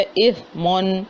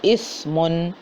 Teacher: اثمن سا پڑھنا ہے، سیٹی کی آواز بالکل ختم کرنی ہے، نرمی کے ساتھ پڑھنا ہے